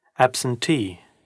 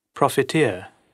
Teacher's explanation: a secondary stress comes on the penultimate syllable of the stem